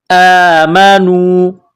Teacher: یہ الف کے اوپر کڑا زبر ہے، اس کو حمزہ پڑھیں گے، ایک الف کی لمٹ میں اس کو کھینچیں گے۔ نون کو واو کے ساتھ ملانا ہے، آمنوا۔